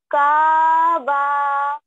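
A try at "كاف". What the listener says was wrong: का नहीं, ये काफ है पूरा, काफ, फा भी है लास्ट में, काफ।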